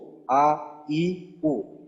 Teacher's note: হলকের শুরু থেকে হামজা